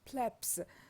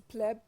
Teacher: So the basic form is pleb, and here by adding S, this B becomes P, the voiceless P, because of assimilation with S, which is voiceless. So this is, I mean, the basic form of this word in Greek, as you see here. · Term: assimilation of voicing